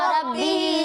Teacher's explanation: यहाँ हा के नीचे खड़ा ज़ेर है, इसे एक अलिफ के बराबर खींच कर पढ़ना है